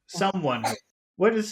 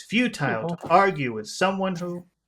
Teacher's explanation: big small big small big small pattern that's very typical of English